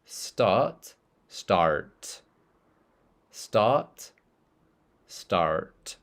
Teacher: in British English start your tongue doesn't move at all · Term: non- rotic